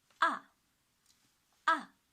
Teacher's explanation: the fourth tone from five to one short and strong strictly drop